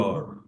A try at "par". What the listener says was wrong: You do the same thing with your mouth. It's just what you do with the air. So instead of eating the air, you push it out instead. Par.